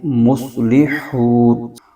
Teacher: صاد حروف مستعلیہ کا حرف ہے، اس کو پر کر کے پڑھیں گے